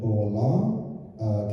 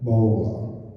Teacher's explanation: mild Doric, long vowels often become diphthongs, and the word sounds more like a sliding vowel